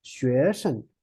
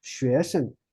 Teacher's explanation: 生, but it's neutral tone.